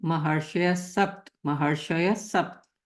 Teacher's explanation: wherever the visarg is coming before the sound sa, then we directly take it to sa. We will not say ha and then sa.